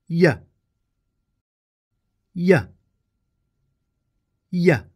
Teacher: Y is a voiced, gliding consonant. The tip of the tongue is down behind the bottom teeth, while the front of the tongue is raised in the same position for the vowel E, as in me.